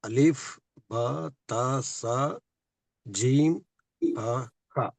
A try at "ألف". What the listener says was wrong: Here it is alif. There is no prolongation. No, you have to limit it. ALIF, not ALEEF.